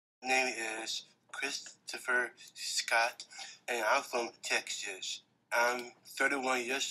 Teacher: vocal quality is monotonous and low pitched breathy and rough